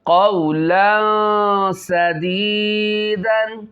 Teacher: تنوین کے بعد حرف اخفا میں سے سین آ رہا ہے. صحیح ہے. چھپا کر غنہ کریں گے